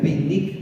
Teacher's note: Y no es como esta B de B larga, ¿no? Es la V o B labiodental, como dicen.